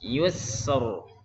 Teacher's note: Sinnya rafa mengalir banyak. Yusr. Tipis ya.